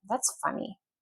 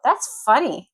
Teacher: if the intonation goes down, that's funny. That means strange or unusual.